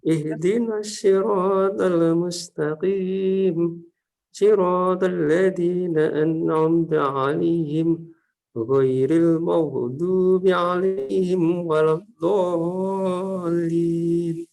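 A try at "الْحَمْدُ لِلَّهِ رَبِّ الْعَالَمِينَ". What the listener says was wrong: Untuk madnya tadi tinggal di na'budu sama beberapa makhraj nanti diperbaiki. Salah satunya adalah huruf H. Jadi hanya itu lebih terlalu dalam. Jadi kalau terlalu dalam nanti lebih mirip ke huruf kha. Misalkan contohnya adalah al-ha.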